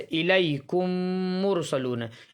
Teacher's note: جب میم ساکن کے بعد دوسرا میم آوے، میم ساکن کے بعد میم آوے تو میم کو میم سے ملا کر جو ہے غنہ کے ساتھ پڑھا جائے گا، یعنی ناک میں تھوڑی دیر آواز کو روکیں گے، اور چونکہ غنہ کرتے وقت دونوں ہونٹ اس طرح سے ملتے ہیں جیسے الیکم مرسلون، اس لیے اس کا نام ادغام شفوی ہے۔